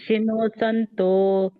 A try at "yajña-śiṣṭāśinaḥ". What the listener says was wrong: Shinaha. Shinaha. Yajña-śiṣṭa, she, naha, and not no. Naha.